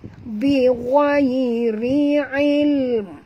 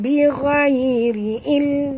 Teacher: tutup mulut maknanya kita membunyikan mim yang tak dengar